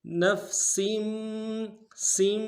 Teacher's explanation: اوپر تشدید زور دیں گے اور سین کی نیچے تنوین ہے، تنوین کو آگے میم کے ساتھ ملانا ہے، میم کے اوپر تشدید زور دیں گے